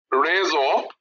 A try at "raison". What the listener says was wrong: না, আরের উচ্চারণ ঘ, raison